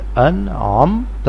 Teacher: دوسری لائن حمزہ نون زبر ان، عین میم زبر عم، انعم نون ساکن کے بعد عین ہے اور عین حروف حلقی ہے، اس لیے نون کی آواز ناک میں سے نہیں آئے گی، یعنی نون کی آواز میں اخفا نہیں کرنا بلکہ اظہار کرنا ہے۔